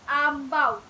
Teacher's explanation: Penghasilan diftong au ini berlaku apabila keadaan bibir daripada hampar ke bundar, hujung lidah hampir terkena gigi bawah, udara dari paru-paru keluar melalui rongga hidung.